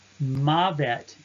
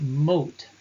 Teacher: The diphthong ave will contract to a holum, o. Mavet in the absolute form, death, but mot, construct form, death of, spelled in this case and most commonly with a mater.